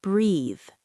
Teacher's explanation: It has that nice buzz at the end.